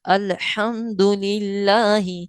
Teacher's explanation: اور اس کے بعد الحمد للہ، یہاں پر اس میں جلالت اللہ کا لام تو ہے لیکن لام کے نیچے زیر ہے. لام سے پہلے والے حرف کے نیچے زیر ہے، تو للہ باریک پڑھا جائے گا